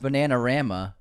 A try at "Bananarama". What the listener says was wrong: Bananara. I think there's another R in there that you missed.